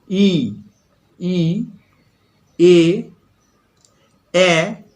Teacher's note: ই, ই, এ, এ যখন উচ্চারণ করছি জিভটা কিন্তু সোজাভাবে থাকছে সামনের দিকে। ই একটু একটু সামনের দিকে, একটু হেলে নিচে। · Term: সম্মুখ স্বরধ্বনি